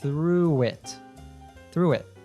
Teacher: through and it link together. That sounds like through it.